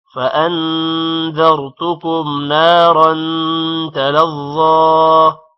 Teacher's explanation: نارن را پر دو زبر ہے، غنہ ہوگا. تلظى ضا موٹا ہوگا اور ضا پر کھڑی زبر ہے، تھوڑا سا لمبا بھی ہوگا